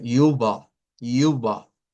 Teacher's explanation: La U se pronuncia así, es una U con diéresis y se pronuncia al final la ER con lo que es un sonido de A media centralizado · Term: a media centralizada